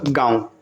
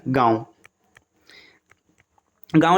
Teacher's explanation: चंद्र बिंदु के उच्चारण के समय हवा मुंह और नाक दोनों से निकलती है